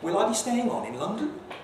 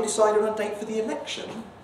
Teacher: it's an echo of the previous question and you rise even though it's a wh question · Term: echo question